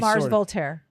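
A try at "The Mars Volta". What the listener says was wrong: Volta. No, there's no R on the end. VOLTA. It's not Mars Voltaire. It's Mars Volta, New Haven.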